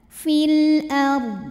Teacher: menghadapi huruf qamariah yaitu Hamzah maka lam dibaca jelas fil ARD huruf rho dibunyikan secara tafkhim karena huruf sebelumnya fathah maka D tebal fil ARD dan Dod harus tetap terbaca tapi